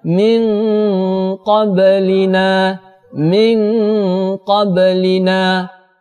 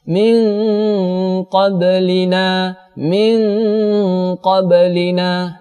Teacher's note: Nun mati berjumpa dengan huruf qaf, maka cara membacanya yaitu disamarkan seperti huruf ng dan disertai dengan dengung. Min qablina, min qablina, disamarkan dua harakat. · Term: ikhfa ab'ad